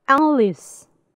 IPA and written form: ˈælɪs (Alice)